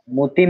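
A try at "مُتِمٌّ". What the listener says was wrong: মুতিম্মু মুতিম্মুতে গুণনা হবে, কিন্তু বলছিলাম নুনে মিমে তাসদিদ হলে কি করতে হয়? মুতিম্মু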